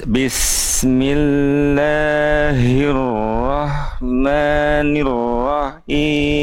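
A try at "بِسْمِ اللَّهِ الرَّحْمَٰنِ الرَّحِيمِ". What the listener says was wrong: Nafasnya nggak nyampe. Lebih cepat berarti bacanya.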